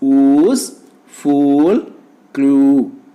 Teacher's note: Oo is a back, close, rounded vowel.